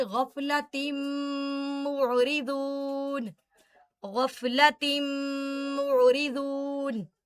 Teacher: غفلت معرضون، ادغام بغنہ، تنوین کے بعد میم ہے تو ادغام بھی ہوگا اور غنہ بھی ہوگا